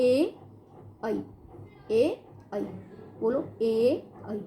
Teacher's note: कंठ तालव्य का अर्थ है कंठ और तालु से, कंठ से भी उसका होगा और तालु से। बोलते समय कंठ, हमारी जो जीवा है वो कंठ और तालु दोनों में स्पर्श करेगी।